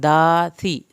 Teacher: सा को ज़बान की नोक से पढ़ना है , सा की ज़ेर को लंबा नहीं खींचना, रॉ को पुर